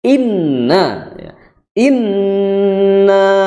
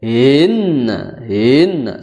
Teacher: ini yang menjadi catatan juga huruf hamzahnya Jangan sampai hilang Jangan sampai hang ya jangan sampai hang atau hilang dibacanya itu